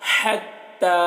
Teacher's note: اس ہا کو حلق سے ادا کریں گے